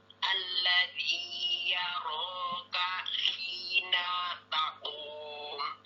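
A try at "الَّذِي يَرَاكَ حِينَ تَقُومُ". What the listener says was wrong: Di sini hina, nah yang harusnya satu harokat memanjang atau istilahnya adalah tamtid sehingga lebih dari satu harokat, tapi tidak sampai dua harokat. Hina takum, harusnya hina takum, seperti itu.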